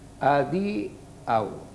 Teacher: O sigui, això, la A i la U a la mateixa síl·laba. I la pronunciació forta a la penúltima vocal, que és la I